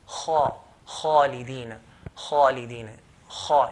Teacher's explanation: But I've taken out from its correct makhraj, I mean, but I've not pronounced it properly. The Arabs used to pronounce kha with heaviness by elevating the back of the tongue.